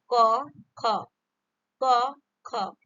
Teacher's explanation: ये आपकी कंठस्थ से बोला जाता है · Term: कंठव्य ध्वनि